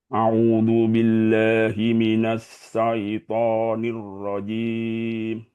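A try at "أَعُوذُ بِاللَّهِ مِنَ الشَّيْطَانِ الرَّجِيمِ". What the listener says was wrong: Sya-nya dimaksimalkan lagi. A'udzu billahi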